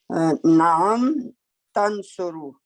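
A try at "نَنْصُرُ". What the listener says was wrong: नहीं ये तंसुरू नहीं है, ये नंसुरू है। ये नून को हमने पढ़ा था ना, जैसे नाबुदू,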